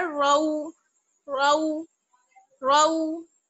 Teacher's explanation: रा वाउ जबर रऊ, रऊ, रा पे आपको मालूम है कि जब जबर और पेश होता है तो हम उसको पुर यानी मोटा पढ़ते हैं